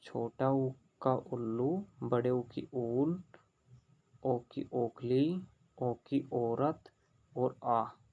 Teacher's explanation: इन स्वरों के उच्चारण में होठ गोलाकार होते हैं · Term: वर्तमुखी स्वर